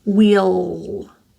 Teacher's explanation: This is a dark L as well, so more of the middle and back of my tongue is pressing up, not just the tongue tip.